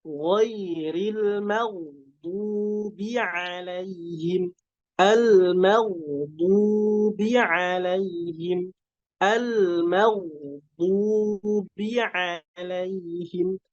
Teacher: Ghainnya tebal plus mengalir